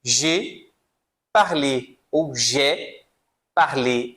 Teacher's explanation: j'ai parlé, ainda melhor, o som aberto, né, do E.